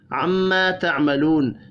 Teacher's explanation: الف اور واو مدہ ایک ایک الف کے برابر کھینچ کر پڑھے جائیں گے. میم مشدد پر غنہ کرنا ہے، وف کی صورت میں نون ساکن پڑھا جائے گا.